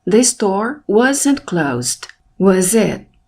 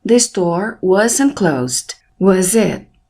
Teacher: Eu elevei a minha voz no it, que é a última palavra da pergunta. Rising intonation, entonação crescente.